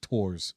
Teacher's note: So it's weird because also it's Japanese, so it's Tor's. They don't do TH sound, so it's Tor's.